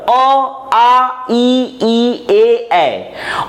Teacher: ऐसे स्वर जो ओठों के गोलाकार होने के कारण उच्चारित नहीं होते हैं, ये कहलाते हैं अवृत्तमुखी स्वर